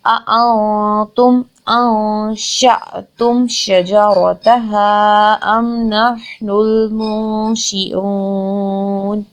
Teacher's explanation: نون ساکن کے بعد شین آ گیا، یہاں پر لیٹر آف اخفا آ گیا، اگین ہم نے نون ساکن کی آواز کو ناک میں چھپا لینا ہے۔